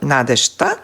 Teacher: тука ние го изговараме беззвучното ш, надежта, но според правописот пишуваме ж, надежта.